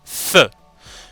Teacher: donc on appuie la lèvre inférieure contre les dents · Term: fric hâtives sur de la vie dental